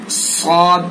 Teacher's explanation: सौद को पुर पढ़ेंगे, मोटा करके पढ़ेंगे, यानी मुंह भर के पढ़ेंगे